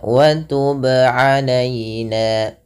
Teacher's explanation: Yang benar adalah dia memantulkannya tanpa berhenti, tanpa menambahkan hamzah. Ya, contohnya wa tub alaina, sesuaikan dengan makhraj dan sifat dari huruf ba. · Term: qalqalah